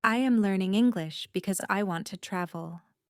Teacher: Notice how my voice rises on because and then falls at the end. This intonation helps you understand when a sentence is continuing and when it is ending.